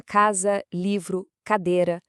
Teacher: essas são as paroxítonas, palavras com a penúltima sílaba tônica.